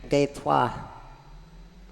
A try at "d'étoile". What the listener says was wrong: Oh, you missed the last syllable, the le, d'étoile.